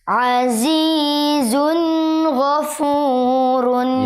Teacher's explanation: tanwin bertemu Gin harus dibaca jelas jelas jangan mendengung jangan mendengung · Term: izhar halqi